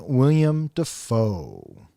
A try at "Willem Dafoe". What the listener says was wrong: Willem. It's not William.